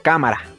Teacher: la tilde nos indica la sílaba acentuada, así que ya sabemos que ka es la sílaba tónica y ma y ra son las sílabas átonas.